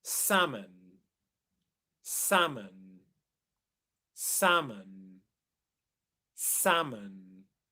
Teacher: So in the word salmon, there's no L sound. It's just silent. It's a short A sound instead. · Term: silent L